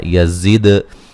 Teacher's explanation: यज़िद दाल पे क़लक़ला करेंगे